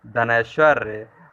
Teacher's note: अ और ऐ मिलकर के ऐ का उच्चारण होगा